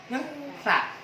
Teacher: Dibaca sa, ujung lidah dirapatkan dengan gigi atas.